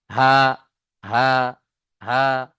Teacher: এই হার আওয়াজটা গম্ভীর আওয়াজে হবে, মোটা আওয়াজে। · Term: ছোট হা